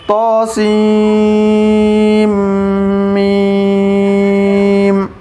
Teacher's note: سین کے بعد میم پر تشدید ہے تو سین کو میم سے ملائیں گے، سیم ہو جائے گا، سیم گننا بھی کرنا ہے کھینچنا بھی ہے، طاسیم میم اس طرح۔